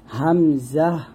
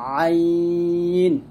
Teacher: হামজার উচ্চারণটা আমরা কণ্ঠনালীর শুরু থেকে উচ্চারণ করি হামজা, আর আইনটা আমরা কণ্ঠনালীর মাঝখান থেকে চাপ দিয়ে উচ্চারণ করি